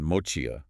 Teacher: word ends in a vowel an N or n s and the stress falls on the second to last syllable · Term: natural stress pattern